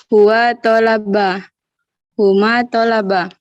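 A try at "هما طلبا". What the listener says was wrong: Kasih panjang karena ada alif di belakang. Tolaba seperti nafa'a, fa'ala.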